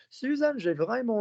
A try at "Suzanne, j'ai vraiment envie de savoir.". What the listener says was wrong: Don't blur vowels. So you've got a lovely soft mouth, but don't blur the vowels.